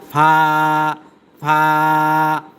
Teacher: নিচের ঠোটের প্যাট সামনের উপরে দুই দাঁতের আকার সাথে লাগাইয়া